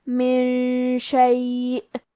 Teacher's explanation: شین حروف الاخفاء میں سے ہے تو ہم یہ حکم کو غنہ کے ساتھ ادا کریں گے